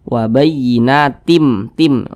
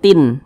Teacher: dimasukkan kemudian juga didengungkanah atau dighunahkan begitu Apanya yang dimasukkan ini bunyi tanwin ini dimasukkan ke huruf mim langsung melebur ke huruf mim